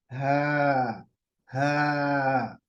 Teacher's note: इसकी आवाज आएगी हलक के बिल्कुल आखिरी हिस्से से, यहाँ से। हा, हा।